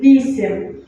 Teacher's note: And the stress is here on the first vowel.